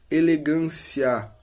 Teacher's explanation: ao pronunciar a vogal A, ocorre uma abertura da boca em relação à semivogal I